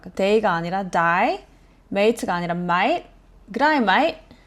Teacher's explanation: day, mate, name 이런 단어 이 A 소리가 호주에서는 I에 가깝게 들려요.